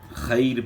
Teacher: را ساکن سے پہلے یا ساکن ہے، جب بھی را ساکن سے پہلے یا ساکن ہو تو اس کو باریک پڑھنا ہوتا ہے، موٹا نہیں ادا کرنا ہوتا۔